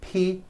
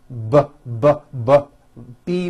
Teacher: voicing ppb B you see that everything here stays the same the only difference is my vocal cords are either vibrating or they're not vibrating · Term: paired consonants